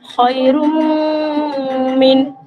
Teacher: তানবিনের পরে ইদগামের বাগুনার অক্ষর মিম এসেছে, তাই এখানে 1 আলিফ পরিমাণ গুণনা সহকারে পড়তে হবে।